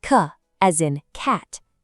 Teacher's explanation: C is a crisp little tap at the back of the throat